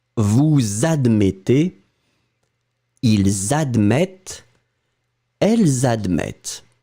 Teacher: we'll make this liaison, so the link between the subject that ends, as you can see, with the S and the verb that starts with a vowel